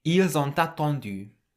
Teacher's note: the S on the end of il can be pronounced like a Z, and the T on the end of on can link with the A at the start of attendu